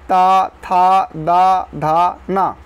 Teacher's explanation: ता वर्ग का उच्चारण स्थान क्या है दंती है